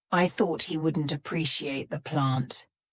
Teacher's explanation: my tongue is stopped at the top of my mouth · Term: stopped tea